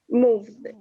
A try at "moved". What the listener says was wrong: Necesito escuchar ese d.